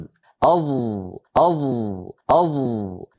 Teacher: ان تینوں حروف میں زبان کے ٹکرانے کی جگہ ایک ہی ہے، لیکن اختلاف صرف یہ ہے کہ ضا میں زبان کا پچھلا حصہ اوپر اٹھتا ہے اور تھوڑا سا پیچھے کی طرف جاتا ہے